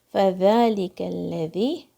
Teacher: ذال کی آواز زبان کی نوک سے آئے گی